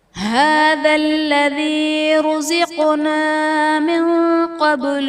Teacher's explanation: من قبل میں نون ساکن کے بعد حروف اخفا میں سے قوف ہے، یہاں پر اخفا کا قاعدہ ہوگا، یعنی نون ساکن میں ہم غنہ کر کے پڑھیں گے